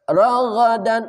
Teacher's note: ghain dari ujung kerongkongan